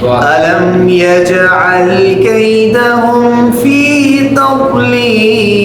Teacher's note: ضاد ہمیں موٹا پڑھنے کا ہے.